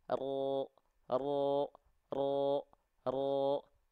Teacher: Ya pangkal lidah kita naik Nah karena dia pangkal lidahnya naik maka ketika dia dilafalkan vokal a-nya akan otomatis jadi O